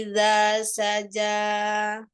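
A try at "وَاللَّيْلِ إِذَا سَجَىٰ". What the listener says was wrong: Kepanjangan saja, dua aja saja. Matobinya dua aja.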